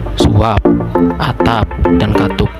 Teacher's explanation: Bila berada pada akhir kata, fonem P tidak diucapkan secara lepas. Bibir kita masih tetap tertutup rapat waktu mengucapkan bunyi ini.